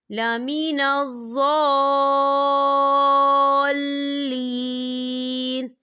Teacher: یہاں دیکھیے خالی الف سے پہلے زبر ہے اور اس پر مد بھی ہے تو یاد رہے اگر حروف مدہ کے بعد جو ہے تشدید والا حروف آتا ہے تو جو مد ہوتی ہے وہ مد لازم کہلاتی ہے اور اس کی مقدار جو ہے 6 حرکت کے برابر ہوتی ہے تو ہم اسے 6 حرکت کے برابر کھینچ کے پڑھیں گے.